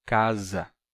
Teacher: o S, entre vogais, se pronuncia como Z, casa, porque ele ganha a sonoridade das vogais que estão ao lado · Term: som de Z